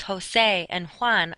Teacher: the letter J in Spanish is how they make our H sound